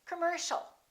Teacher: the second syllable is stressed the Oh and I a are both reduced so it's not